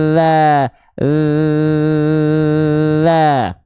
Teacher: kalau huruf Zal dia mengalir suara saja enggak nafasnya enggak ngalir